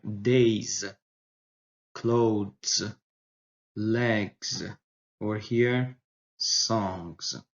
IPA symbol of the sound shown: z